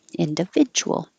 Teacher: The D and the U next to each other make a J.